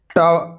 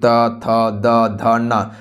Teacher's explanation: ट जो है यह आपका दांत से उच्चारण नहीं होता है। यह आपका मूर्धा से उच्चारण होता है।